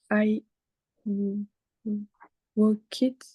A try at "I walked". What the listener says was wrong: Walked. Donc, ID, ça marche pas. Avec le D, comment tu le dirais? Walked.